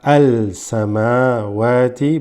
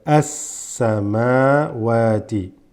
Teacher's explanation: alif lam, when followed by almost half of the Arabic letters basically, this assimilates into a straight assa. So not al-samawati, but as-samawati.